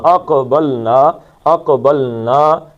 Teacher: قاف کا قلقلہ ہے، اق موٹا پڑھنا ہے اور قلقلہ کرنا ہے، اقبلنا، اقبلنا فیہا، پھر ویسے ہی وَإِنَّا، اور نون کو کھینچ دینا ہے، وَإِنَّا لَصَادِقُ، صاد کو موٹا پڑھنا ہے، 2 حرکتیں، لَصَادِقُون، کو 2 حرکتیں تھیں لیکن عارضی طور پہ نون ساکن ہوا تو اس کو 5 حرکتیں کھینچ لیں گے۔